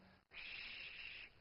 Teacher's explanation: you can say something like sh, where the main action is going on already a bit further back, still at the hard part of your palate